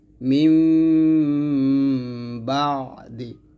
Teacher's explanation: গুন্নাটা আপনারা এক আলিফ পরিমাণ টেনে গুণনা করবেন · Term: ইকলাব গুন্না